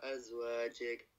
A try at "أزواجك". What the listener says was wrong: Okay, hold on. أزواجك جيك not جيك. Don't put a nasal sound in the جيم. أزواجك.